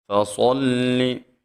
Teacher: صاد کو موٹا پڑھیں گے